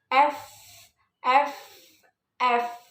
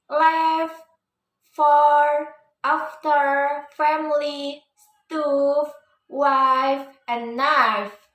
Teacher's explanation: The pronunciation F is called an unvoiced sound, which means don't use your vocal cords. How to the pronunciation F is the place in the upper teeth beat your lip like this.